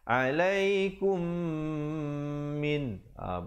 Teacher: mim mati bertemu mim dengungkan kadar panjang dua rakaat ilaikum minha bunyi terjamin jangan lambat termasuk Khoir im&co irim disitu